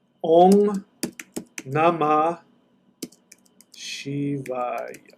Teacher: That M is actually an NG sound.